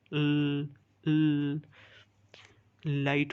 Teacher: Air is release through sides और लेटरल्स, इसमें हमारे पास जो एयर है वो साइड्स से रिलीज होती है। फॉर एग्जांपल एल साउंड जो है तो ल लाइट में, तो इससे हमारे पास जो एयर है तो वो साइड से होती है, तो इसलिए इसे लेटरल भी कहते हैं या लिक्विड भी कहते हैं। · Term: लेटरल साउंड